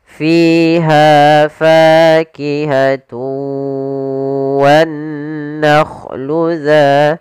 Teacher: Usahakan panjangnya fiha fa harus sama. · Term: mad tabi'i